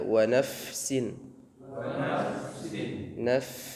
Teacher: fa itu keluar dari atraf thanaya al-ulya atau bagian ujung gigi sari atas bertemu dengan batunis syafah as-sufla, bagian perut atau bagian dalam bibir bawah untuk pengucapan huruf fa.